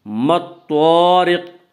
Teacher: ما الطارق طا کو پر پڑھیں گے۔ طا حروف مستعلیہ میں سے ہے۔ حروف مستعلیہ 7 ہیں جن کا مجموعہ خصہ ضغط قز ہے جو ہمیشہ ہر حال میں پر پڑے جاتے ہیں۔